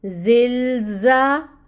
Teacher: لام کو اگین آپ نے ہلانا نہیں ہے، لام کے مخرج پہ آواز کو جاری رکھنا ہے